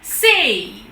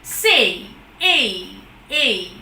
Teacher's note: It begins with A, it doesn't end in or doesn't completely reach E.